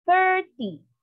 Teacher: all numbers ending in t y the stress is on the first syllable